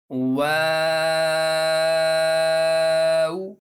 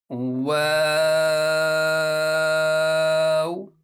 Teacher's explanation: start में भी होंठों को गोल करेंगे और फिर इसके आखिर में भी होंठों को गोल करेंगे जैसे दम करते हुए इंसान फूंक मारता है तो फूंक मारते · वाव को अदा करते हुए मैंने शुरू में होंठ गोल किए और फिर नॉर्मल कर लिए और फिर आखिर में भी होठों को गोल किया